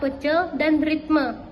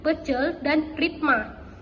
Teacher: fonem E dilafalkan menjadi A